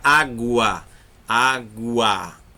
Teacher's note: Então, o som subiu, é crescente.